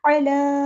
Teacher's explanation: लाम पे खड़ा ज़बर है, मद इसलिए हो रही है, अलिफ के बराबर लंबा करना है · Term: अलिफ मद